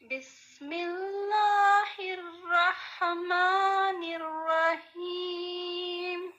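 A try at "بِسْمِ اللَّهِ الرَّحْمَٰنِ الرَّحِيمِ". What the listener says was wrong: ٹھیک ہے، بارک اللہ فیک.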